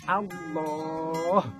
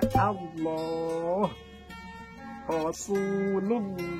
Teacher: Lam jalalah jangan menggunakan W, tapi pakai lam.